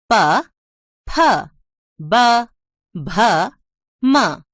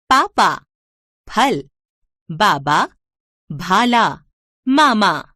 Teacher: इन 5 व्यंजनों को बोलते समय हमारे होंठ आपस में मिलते हैं